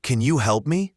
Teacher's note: Similar to other can you phrases, this often reduces to can ya or kun you. The N connects to the Y, and help has a clear L sound.